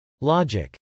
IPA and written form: lˈɑdʒɪk (logic)